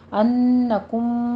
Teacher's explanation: अन्नकुम दोनों जगहों पे हमारे पास गुन्ने की आवाज़ है, पहले गुन्ने वाजिबा है 2 काउंट करना है, फिर कुम में मीम साकिन का कायदा इदगाम शफ़ी है 2 काउंट करने हैं।